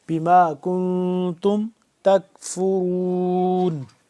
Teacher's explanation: اس پہ ہم نے اخفا کرنا ہے، ناک کے اندر آواز کو لے جا کر پڑھنا ہے، نون کیونکہ یہاں پہ کیا ہے، ساکن ہے، بما کنتم تکفرون۔